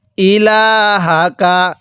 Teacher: এই যে লামের মধ্যে আমরা 1 আলিফ টান দিব, কারণ যেই হরফের উপর এরকম খাড়া চিহ্ন থাকবে ওই হরফটি আমাদের 1 আলিফ টেনে পড়তে হবে।